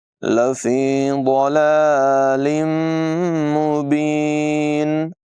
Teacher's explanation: ضاد کو پر آواز میں ادا کریں گے